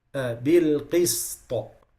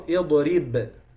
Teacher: So when I stop on bilqist, this qalqala is heavy qalqala. Bilqist. It's different from idrib. This is qalqala, but it's light qalqala.